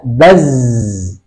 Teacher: Kesalahan orang yang membaca huruf za pada saat disukun tidak bergetar tenggorokannya, sehingga yang muncul adalah menjadi huruf sin. Bas. Harusnya baz, bukan bas.